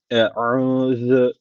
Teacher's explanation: normal Türkçedeki u değil boğazdan okunması gerekiyor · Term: boğaz harfi